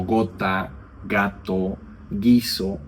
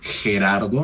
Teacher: es como la G en español cuando es una velar sonora